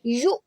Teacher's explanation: جب بھی حمزہ کے اوپر سکون آ جاتا ہے تو پھر اس کو جھٹکے سے پڑھتے ہیں. اس کو یومنون نہیں پڑھیں گے، اس کو پڑھیں گے یو.